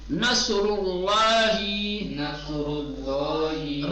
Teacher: اس لیے کہ اس پر پیش آیا ہے۔ اللہ کے لام کو تفخیم کیوں پڑھیں گے؟ کیونکہ اس سے پہلے پیش آیا ہے۔ · را اور لام دونوں کی تفخیم ایک جگہ · را کو تفخیم کے ساتھ کیوں پڑھیں گے؟ اس لیے کہ اس پر پیش آیا ہے